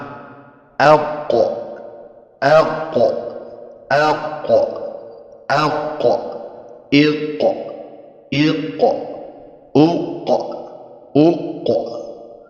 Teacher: Huruf qaf ini keluar dari pangkal lidah yang bersentuhan dengan langit-langit bagian atas, yaitu bagian langit-langit yang lunak.